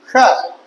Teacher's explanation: ये जो शा है तो ये मूर्धन्य सा है ना, तो जीभ को मूर्धन्य पे ले जाओ